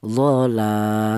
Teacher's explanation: panjangnya 1 alif atau 2 harokat atau 2 ketukan